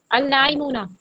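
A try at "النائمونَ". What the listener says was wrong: आराम से बोले, मुझे समझ में नहीं आ रहा आप लाम को पढ़ रही हैं या नहीं पढ़ रही। अल नाइमुना। अच्छा ये बताएं, हमारी एकेडमी का नाम क्या है? हमारी एकेडमी का नाम क्या है हमारी एकेडमी का नाम क्या है? अन है? कम से कम नून को तो याद रखा करें हमारी एकेडमी के नाम से।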